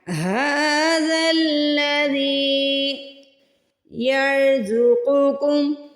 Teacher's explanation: یہاں پہ را کو بھی موٹا پڑھنا ہے، قاف کو بھی موٹا پڑھنا ہے۔ را کے اوپر ساکن ہے تو ہم نے یہاں پہ دیکھنا ہے را ساکن سے پہلے اگر زبر آ رہی ہے تو ہم نے را کو موٹا پڑھنا ہے، اگر پیش آ رہی ہے پھر بھی موٹا پڑھنا ہے۔